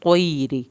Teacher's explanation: तैरी, त्वा पुर करना है, या साकिन को खींचना है, रा की ज़ेर को लंबा नहीं करना।